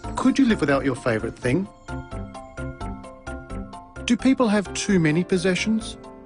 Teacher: Did you notice the pitch of his voice rise at the end of the questions? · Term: Rising intonation patterns